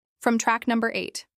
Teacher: Track rhymes with back, and stress is on num in number